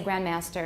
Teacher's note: in context I might say grandmaster and you don't hear the D at all